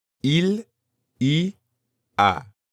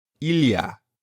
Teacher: Il y a is made up of three words, il, y, and a. But when spoken quickly, it usually sounds like one word